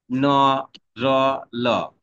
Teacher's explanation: এই যে যেখানে করছো দাঁতের গোড়ার পরে যে মাড়ি যেটাকে বলা হয়, হ্যাঁ, সেখান থেকে তুমি এই তিনটা ধ্বনি উচ্চারণ করছো